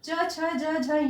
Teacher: इनका उच्चारण स्थान तालु है, इसलिए इन सारे वर्णों को तालव्य वर्ण कहते हैं